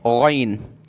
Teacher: اور غین کو ہم نے گلے سے نکال کر پڑھنا ہے، غین، اس کی جگہ آپ گاف نہیں پڑھیں گے، یعنی گین نہیں پڑھیں گے، ٹھیک ہے، معنی چینج ہو جائیں گے قرآن مجید کے۔